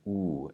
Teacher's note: So what there is to know about the letter U is it sounds like U in English. Just make sure that your lips are fully rounded and it's a very pure sound, U.